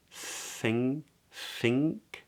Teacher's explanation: short little i i i and this is weird right because I know it's written as NK but we actually make the sound NG · the back of the tongue raises raises up and then we make a k where the back of the tongue drops away